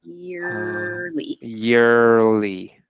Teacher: Finish the R in year before the LY.